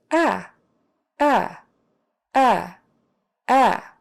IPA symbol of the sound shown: æ